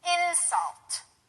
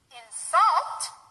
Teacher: The first one will be stressed on the first syllable. That's the noun. The second one will be stressed on the second syllable. That's the verb.